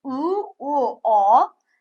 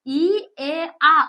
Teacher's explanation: lablanganlarimiz u, u, o lablanmaganlarimiz esa i, e, a unlari lablanmagan sanaladi